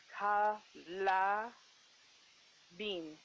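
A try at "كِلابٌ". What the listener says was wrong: ki la bin kaf kasra ki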